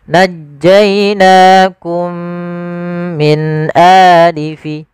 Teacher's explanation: kita masukkan mim yang pertama kepada mim yang kedua, kemudian ditahan dengan gunnahnya. Najjainakum min a, jangan najjainakum min a, tapi ditahan. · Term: idgham mimi